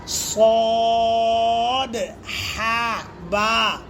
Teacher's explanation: صاد کے اندر جو دال ہے، قلقلہ ہے، وہ بھی ہونا ہے، اور سے حرفی کو تھوڑا کھینچنا ہے، دو حرفی کو تھوڑا کھینچنا ہے، سے حرفی کو زیادہ کھینچنا ہے۔